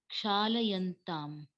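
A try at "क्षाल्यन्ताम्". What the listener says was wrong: Kshalyantam. Only Ksalayantam, Kshalyantam comes. We had seen it earlier, I think. So Bahuvachana you did correctly, except this Akara dosha happens.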